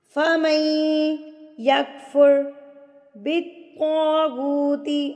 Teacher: یہاں پر ادغام مع الغنہ، یعنی ادغام غنہ کے ساتھ ہو رہا ہے. جب آپ نے میم کو یا کے ساتھ ملانا ہے تو آپ نے غنہ کے ساتھ ملانا ہے.